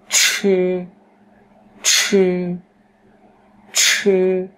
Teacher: nó giống như âm trờ nặng trong tiếng Việt, tuy nhiên là các bạn phải bật hơi